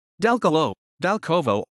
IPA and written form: dalˈkɔvɔ (Dalkowo)